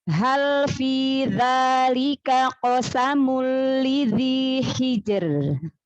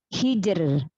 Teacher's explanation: Lalu yang di ayat kelima ro sukun karena wakofnya, karena sebelumnya huruf sukun, sebelumnya lagi huruf kasroh, haknya kasroh, maka ro-nya tipis, dibaca tarqiq, dibaca tipis